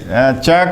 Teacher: च का उच्चारण स्थान तालु, और इसीलिए यह कहा जाता है तालव्य।